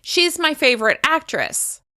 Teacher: As you can hear, I'm de-emphasizing the contraction she's in order to emphasize the keywords favorite and actress